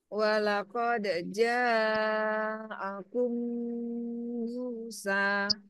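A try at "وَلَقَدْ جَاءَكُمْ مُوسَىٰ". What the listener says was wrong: Ja-nya sepertinya kurang panjang, Bu, ja-nya.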